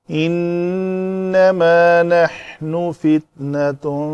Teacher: تا مربوطہ ہے، گول تا مربوطہ کہتے ہیں بندھے ہوئے کو، تو یہ تا مربوطہ ہے، جب اس پر وقف کریں گے تو ہائے ساکنہ بنا کر پڑھیں گے